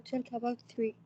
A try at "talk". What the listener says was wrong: We don't pronounce the L, yes. Talk, not talk.